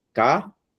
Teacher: Veja que a sílaba forte está sendo a última. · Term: oxítona